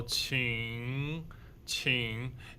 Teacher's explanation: third tone is a little bit down, but a lot of up.